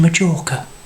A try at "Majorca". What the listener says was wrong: It's Majorca, not Majorca. You pronounce the J with a Y.